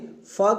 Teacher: निचले होठ के ऊपर के दांत से जोड़ने से फ की ध्वनि